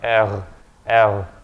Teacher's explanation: the way the French pronounce it is very far back in the throat